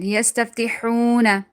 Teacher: Again there is waw madda. Waw is silent, before that there is zamma, so we're going to be stretching it.